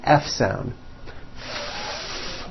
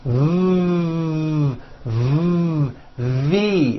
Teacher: F no voicing V voicing V so the F and the V are also paired consonants